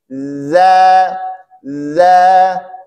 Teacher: ujung lidah kita bertemu dengan ujung gigi seri bagian atas dan Salah satu sifat dari huruf dza yaitu rakhwah mengalirnya suara kita